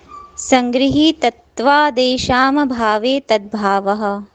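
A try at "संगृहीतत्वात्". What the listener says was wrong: इसको संग्रही मत बोलो आप, संगृहीत्वाद, स्वादेशाम भावे तद भाव।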